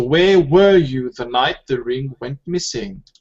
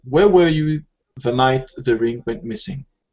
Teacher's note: this is a question and the intonation at the end of this question should go down MH yeah because it's a wh question so every time we